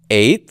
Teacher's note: And the difference in form here is simply because, remember, when we add a makaf to a word, it loses its stress. So eth, without a makaf, has a sere, which is a long I-class vowel.